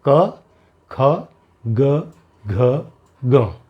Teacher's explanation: तो आपके गले के अंदर पिछला जो हिस्सा है तालु का, वहाँ से आवाज़ आती है। जबान आपकी वहाँ टच करेगी।